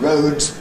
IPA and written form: rəʊdz (roads)